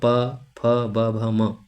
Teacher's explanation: म आता है ओष्ठय वर्ण में